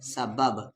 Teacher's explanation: تو جس با پہ جزم ہو تو وہاں پر قلقلہ ہوتا ہے، آواز کو ہلا کر پڑھتے ہیں۔